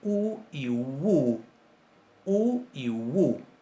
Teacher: Cuando decimos WU, en ese movimiento se nota que esa U muy cerrada está funcionando como una consonante para articular otra vocal que puede ser de la misma calidad, ¿verdad? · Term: semiconsonante